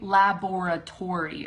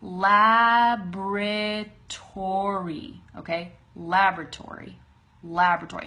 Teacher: the emphasis is right there in the front